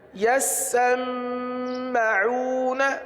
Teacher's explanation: سین پر تشدید ہے، میم پر بھی تشدید ہے، میم پر گنہ ہوگا، ایک جگہ رکنا ہے ایک جگہ گنہ کرنا ہے